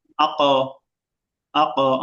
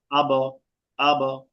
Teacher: এই পাঁচ হরফে জজম হলে প্রতিধ্বনি বা শক্ত করে ধাক্কা দিয়ে পড়তে হয়। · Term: কলকলা